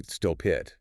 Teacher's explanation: So instead of saying stop it with a clear break, You'd naturally say stop it. The P sound just jumps over to the next word. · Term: consonant-vowel linking